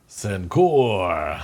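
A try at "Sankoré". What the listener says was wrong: And I think the appropriate pronunciation is Sankore. I think the E is pronounced. I think it's just the language. The home language is Sankore or Sankore or something like that. I don't know where the emphasis should be on it, but I call it Sankore.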